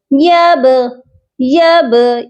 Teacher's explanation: یہاں پر با پر ہم قلقلہ کریں گے، یب یب، اس کو قلقلہ کہتے ہیں۔ قلقلہ کہتے ہیں آواز کا ڈبل ہونا، تو با پر ہماری آواز ڈبل ہونی چاہیے